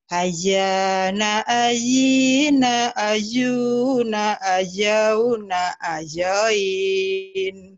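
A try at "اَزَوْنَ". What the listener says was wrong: Bukan ajauna, zai. Zaitun. Azana azina azuna azauna azain. Coba, zai.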